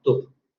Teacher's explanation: en el caso de tub, en donde tenemos una oclusiva bilabial sonora, no va a haber alargamiento. Entonces simplemente se va a pronunciar tub.